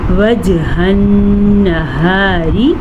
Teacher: نون کا غنّہ ادا کریں گے کیونکہ نون کے اوپر شد ہے، ٹھیک ہو گیا۔ را کو باریک پڑھیں گے، را کے نیچے زیر ہے · وجہ النہار، ٹھیک ہے۔ نون کا غنّہ ادا کریں گے کیونکہ نون کے اوپر شد ہے